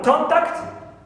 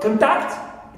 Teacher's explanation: If we stress the first syllable, contact, it's a noun. If we stress second syllable, contact, it becomes a verb. So here, the stress position in these two-syllable words determines the grammatical function and category of the word, whether it is a noun or a verb.